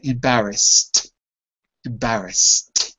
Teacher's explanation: voiceless to make the sound there's no vocal cords involved therefore it ends with a T sound